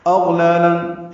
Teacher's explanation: حمزہ اقصی حلق سے نکالیں گے، غین ادنی حلق سے نکالیں گے اور غین پر پڑھیں گے اور اس پہ اظہار ہوگا.